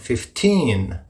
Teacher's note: the stresses on the second syllable teen